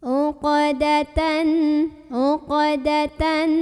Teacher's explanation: Karena ada huruf qalqalah yaitu qaf yang sukunnya ini memang sudah aslinya ya, sukun dari asalnya dan berada di tengah-tengah bacaan. Maka cara membunyikan huruf qalqalah ini adalah dipantulkan dengan pantulan yang kecil. Jadi sambil lewat aja gitu dan ngalir ya bunyi pantulannya. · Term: qalqalah sughra